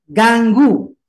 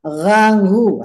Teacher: ganggu itu lidah tapi kalau bahasa Arabnya bahasa Qurannya menggunakan tenggorokan